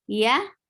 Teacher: we are using middle of our tongue and is going up towards palette but it's not touching actually